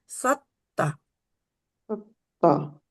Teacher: तो ये इसमें थोड़ा सा ता जो मोटी थोड़ी सी पढ़ी जाती है।